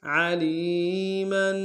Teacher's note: عین کو گہرائی سے ادا کریں گے